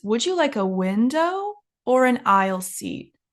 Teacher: Notice the intonation in this sentence. When we have two things, when we're given two options, the first option goes up and the second option goes down. So it's, would you like a window or an aisle seat?